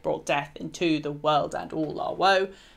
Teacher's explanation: see why the emphasis is I Amic in this line because the stress then falls on death world all woe